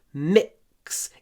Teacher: Здесь у нас супер короткий гласный перед глухим кс